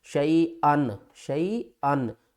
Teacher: نون ساکن اور تنوین کے بعد حروف حلقی میں سے دیکھیں تو حمزہ آ رہی ہے، تو اس کو ہم یہاں پر غنہ نہیں کریں گے ، یہاں پر ہم اظہار کریں گے، شیئن شیئن، حمزہ نون